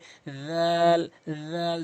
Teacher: জিহ্বার আগা দাঁতের আগা থেকে উচ্চারণ করবেন